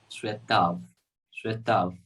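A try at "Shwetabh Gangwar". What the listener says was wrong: So there is a problem with the bha sound. we pronounce bha as va, right?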